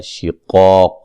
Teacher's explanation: شقاق قاف کو موٹا ادا کریں گے دونوں جگہ، ٹھیک ہے جی، اور الف کو بھی موٹا کریں گے ساتھ۔